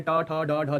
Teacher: टा ठा डा ढा, ये मूर्धा से इसका उच्चारण होता है। · तालु यानी कि जब चा छा जा बोलते हैं जीवा थोड़ा सा आगे टच करती है, लेकिन जब टा ठा डा बोलते हैं जीवा थोड़ा सा और पीछे मुड़ के जगह स्पर्श करती है। तो टा ठा डा बोलने पर जहां पे जीवा स्पर्श करे उसे मूर्धा कहते हैं। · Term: मूर्धन्य